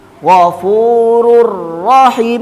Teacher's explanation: Hurufnya idgham bila ghunah. Maka cara bacanya pasti dimasukkan ke huruf setelahnya tanpa mendengung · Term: idgham bila gunnah